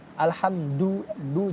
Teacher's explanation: yang baca Quran huruf dalnya masih pakai langit-langit